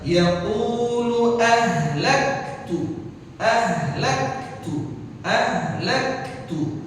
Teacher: Karena lam di sini enggak baik. Langsung dari lam dhammah ke hamzah.